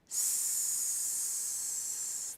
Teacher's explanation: we also have voiceless consonants like the S consonant s there's no vibration there